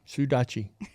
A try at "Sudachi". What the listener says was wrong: Your tongue's getting in the way there. Sudachi.